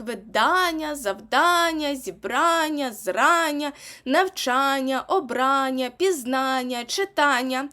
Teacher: ті слова які входять в перелік і закінчуються на Аня матимуть наголос на Ання